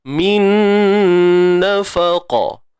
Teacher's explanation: Nun mati bertemu nun. Bi gunnah, dengan dengung. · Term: idgham bi gunnah